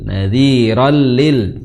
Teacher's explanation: sedikit kelihatan ujung lidah Nadiro ya roll basyar ro di situ ro tanwin bertemu lam jadinya idgham bila ghunah